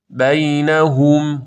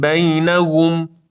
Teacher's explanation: لب‌ها کاملاً حالت قنچه‌ای به خودش می‌گیره و ها رو ادا بکنید